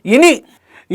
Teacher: ఇని అనేటువంటిది తాలవ్యాలలో ఉంటుంది మరియు అనునాసికంలో ఉంటుంది. కాబట్టి ఇన్నిని ఏమంటాం అని అంటే తాలవ్యానునాసికం అని అంటాము తాలవ్యానునాసికము అంటాం.